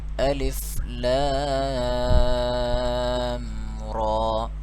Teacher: را کو موٹا پڑھیں گے کیونکہ کھڑی زبر ہے اس پہ